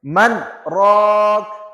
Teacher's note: نون ساکن کے بعد سکتہ آ گیا تو یہاں پہ ہم سکتہ کریں گے، نون پہ رک جائیں